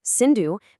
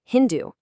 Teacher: Their s sound transformed into an h sound.